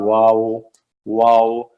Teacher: तो वाव जो है ये होंठ गोल करके अदा होता है